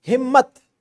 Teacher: मीम हरफ तहज्जी, इसको हमने 2 मरतबा पढ़ा, लिहाजा हम इसके ऊपर शद की अलामत लगा देंगे।